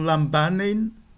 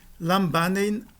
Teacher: E a nasal que o antecede vai ser um M, um mu, né? Porque, já que o beta é uma labial, a nasal que o antecede será também uma labial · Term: nasal labial